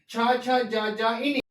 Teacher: తాలవ్యాలు అంటే దౌడ నుండి పుట్టేటివి